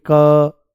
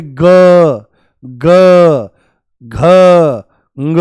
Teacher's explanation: क, आप बोलोगे क, कोई वाइब्रेशन नहीं, नाम मात्र। और जैसे ही बोलोगे ग ग घ ग, पूरा हिल जाता है।